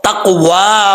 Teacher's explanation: قاف حروف مستعلیہ میں سے پر پڑھا جائے گا، قلقلہ بھی ہو رہا ہے کیونکہ حروف قلقلہ میں سے بھی ہے، تو اس کو تقوا والا، ٹھیک ہے، علی البر والتقوى ولا تعاونوا علی الاثم والعدوان۔